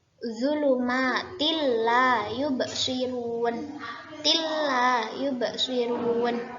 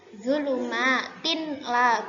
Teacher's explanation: Jadi tidak mendengung, idgham masuk, tidak mendengung. Jadi zulumatil la, bukan zulumatin la, bukan ya, tapi zulumatil la yubsirun. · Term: idgham bila gunnah